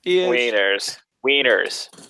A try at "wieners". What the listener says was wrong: Sounds like you're saying weenus.